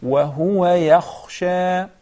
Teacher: There is a difference between yakhsha and yaghsha. And just mispronouncing the kha would turn the word into yaghsha